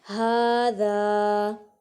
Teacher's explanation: ھذا، ہاں کے اوپر کھڑی حرکت، کھڑی حرکات کو تھوڑا سا کھینچ کر پڑھتے ہیں، اور ذا پر الف مدہ ہے